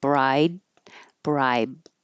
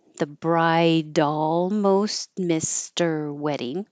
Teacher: Bride and bribe will sound exactly the same. if you just hear the word by itself or if it's before a consonant or at the end of a sentence because you won't release the duh or the B.